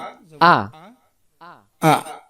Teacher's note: হামজা অক্ষর হলকের প্রথম থেকে শক্ত করে পড়তে হয়